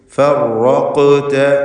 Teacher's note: ഫർ എന്നിങ്ങനെ വിറച്ചു പോകരുത്. ഫറഖത ഖാഫിന് ഖൽഖല സുഗ്റ വരുന്നു, ശബ്ദം ഹറക്കത്ത് പോലെ ചലിപ്പിക്കണം, സുക്കൂനാണ്, ഖൽഖലയുടെ ഹർഫുകളിൽപ്പെട്ടതാണ്.